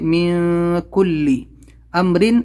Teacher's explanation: نون ساکن کے بعد میں کاف، اخفا لیٹر ہے، یہاں پر ہم اخفا کریں گے